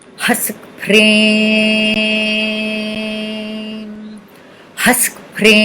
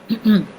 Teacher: don't close your mouth at the end, it's a nasal sound